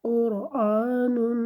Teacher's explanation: کھڑی زبر الف کے قائم مقام ہوتی ہے، مطلب اسے ایک الف کے برابر لمبا کیا جاتا ہے